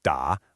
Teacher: And for the fourth, da, a sharp downward chop.